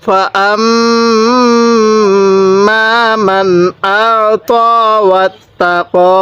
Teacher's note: কারণ নুন সাকিনের পরে এই যে একটি হামজা দেখতেছেন, এই হামজাটি হলো ইজহারে হরফ, আর ইজহারে হরফ হলো 6টি, হামজা, হা, আইন, হা, গইন, খ। তাহলে এই নুন সাকিনের পরে হামজা যেহেতু ইজহারে হরফ, এজন্য আমরা এই নুন সাকিনের মধ্যে স্পষ্ট করে পড়ব